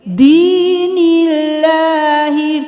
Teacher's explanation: اللہ کے حرف سے پہلے والے حرف پر زیر آ گئی، تو ہم اللہ کے حرف کو باریک پڑھیں گے